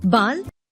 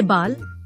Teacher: आगत ध्वनि का भी प्रयोग होने लगा है जो आ और ओ के बीच की ध्वनि है